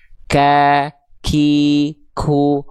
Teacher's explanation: Wajar kalau huruf kaf ada percikan nafas karena memang itu sifatnya. Tapi kalau huruf qof keluar dari kuadratnya koi, ku, nah itu berarti sudah jadi huruf kaf.